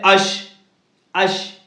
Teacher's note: اوپر کے تالو سے ادا ہوتا ہے، جیسے اش باریک پڑھا جاتا ہے